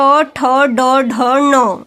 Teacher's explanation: इसे मूर्धा से बोला जाता है, मीन्स मुंह के ऊपर वाले हिस्से से।